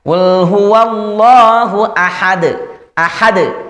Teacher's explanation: Ada suara pantulan pada dal sukun ini. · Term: qalqalah kubra